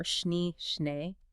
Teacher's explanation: The long E is a pure sound, kind of like the start of the English I in say, but hold it without gliding into the Y sound. Yeah. Keep the lips fairly close, tongue resting low, like an air on a schnee, schnee.